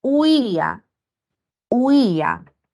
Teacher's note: al pronunciar huía, esta I se vuelve tónica y la tildo porque hay una ruptura con la A. Se produce un hiato acentual.